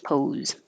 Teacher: pose, that S really sounds like a Z.